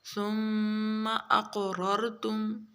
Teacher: بھی، انفسکم من دیارکم ثم اقررتم، ثم کے اوپر غنہ ہوگا، قاف موٹا را دونوں موٹے اور قاف کے اوپر قلقلہ بھی کریں گے